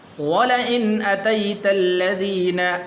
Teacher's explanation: غنہ نہیں کریں گے اس لیے کہ آگے حمزہ حروف حلقی میں سے ہے